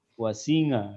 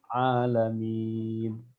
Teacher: Saya juga dengar huruf ain membaca dengan nga gitu ya, dengan ngain gitu ya.